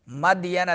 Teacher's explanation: मदयना दाल साकिन है तो कलकला होगा।